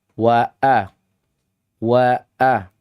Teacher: Wa wa wa wa begitu cara bacanya. Ditambah lagi sifatnya adalah rakhawah. Dia sangat lemah. Maksudnya sifatnya lemah. Beda dengan huruf setelahnya yaitu hamzah qata' yang sifatnya adalah syiddah.